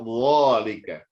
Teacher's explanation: Perbedaannya dengan huruf zal hanyalah tebal. Kalau zal tipis, za.